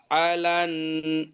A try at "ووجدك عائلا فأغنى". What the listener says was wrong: আটা টান হয়নি, আটা। আ ইলান। আ ইলান। ফা আগনা।